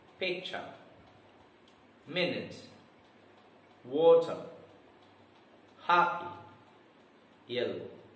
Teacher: the stress in these words are on the first syllable and there are two syllables in picture P cha two syllables